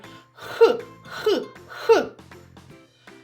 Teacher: промовте декілька разів звук х наче грієте ручки х х х коли ми вимовляємо звук х кінчик язичка опущений а його спинка піднята догори так що язичок схожий на гірку повітря яке ми видихаємо зустрічає перешкоду це спинка язичка а Чи